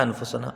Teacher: نون ساکن کے بعد حروف اخفا کا فا ہے، تو یہاں پر ایک الف کی مقدار غنہ ہوگا